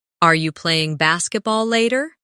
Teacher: In fast speech, are you can sound like are ya